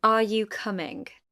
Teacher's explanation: Rising intonation is used for yes no questions, questions that express surprise and listing items. The pitch rises at the end of the sentence.